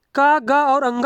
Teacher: किसी भी वर्ग का पहला तीसरा और पांचवा व्यंजन जो है अल्प प्राण व्यंजन होता है और इनमें जो है मुख से कम हवा निकलती है